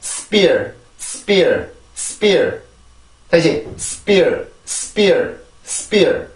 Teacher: 된 소리처럼 소리가 들리게 되는데 왜 이렇게 되냐면 S 발음의 영향 때문에 그렇습니다. S 발음이 이런 P 발음이라든지 T 발음이라든지 K 발음 이렇게 폐쇄 무성음들이 올 경우에는 그 뒤에 있는 이 폐쇄음들이 소리가 된 소리로 바뀌게 돼요. · S 발음은 음절로 올라가기 위한 준비 동작이 필요한 것도 아니고 S 발음 그냥 순수하게 S 발음만 해주면 되는데 길게 나가지 않고 아주 짧게 발음을 하고 그 다음에는 P 발음으로 넘어가 주게 돼요. 그러면 이런 소리가 납니다.